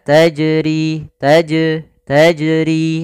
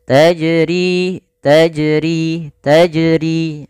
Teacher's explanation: Jim ini makhrajnya dari tengah lidah kita. Dan jim ini memiliki sifat, salah satunya adalah sifat qalqalah. Artinya memantul, ittirab, getar. Maka memantulnya harus dipantulkan.